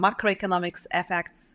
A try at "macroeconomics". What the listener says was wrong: macroeconomics. you've got some extra syllable stress. Macroeconomics. Macroeconomics. You've got primary stress, two primary stresses, and one secondary stress.